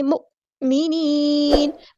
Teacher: حمزہ کی آواز واضح اور جھٹکے والی ہونی چاہیے